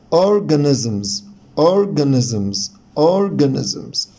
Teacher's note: ولاحظ هنا ان الاس between two vowels، يعني بين حرفين متحركين، فنطقت زه ساوند، والاس اللي في الاخر طبعا بعد voiced ساوند فبتنطق زه، فعشان كده قلنا organisms organisms organisms.